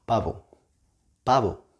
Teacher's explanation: B and V sound the same in Spanish. It's not like in English.